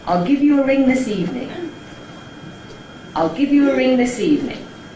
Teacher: you rise up to the first accent there, I'll give. That establishes the starting point of the head, and then the pitch stays relatively level after that until you get to the nucleus. So there is an additional stressed syllable in there, the word ring. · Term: high level head